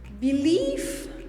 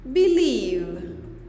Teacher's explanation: The F changes into V. So the consonant, the voiceless F, becomes the voiced V.